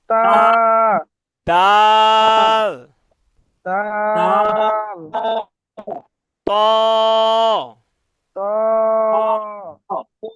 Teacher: জিহ্বার আগা সামনের উপরের দুই দাঁতের গোড়ার সঙ্গে লাগাইয়া উচ্চারিত হয় তা